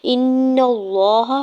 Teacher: حمزہ کی زیر کو نون مشدد کے ساتھ ملاتے ہوئے نون مشدد پہ غنہ کریں گے